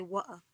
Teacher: For instance, when they want to say water, they say water. So that's a glottal sound where you make a stop in the back of the throat